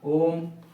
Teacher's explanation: त्रि मात्र जिसमें दो से अधिक या तीन मात्राएं हो उसे हम प्लुत स्वर कहते हैं